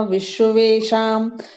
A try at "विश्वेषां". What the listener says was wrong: हाँ, विश्व शाम, विश्व, विश्व बोल के फिर शाम बोला, विश्व शाम इकट्ठा।